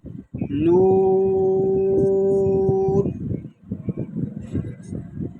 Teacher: نون، اس کو نون یا نون اس طرح نہیں پڑھیں گے، یعنی نہ تو ناک میں آواز جائے اور نہ ہی نون ساکن میں جنبش ہو، بلکہ اس طرح پڑھیں گے نون، یعنی نون پہ آپ کی آواز اور سانس دونوں رک جائیں۔ اس میں جو قاعدہ لگ رہا ہے وہ ہے مد لازم.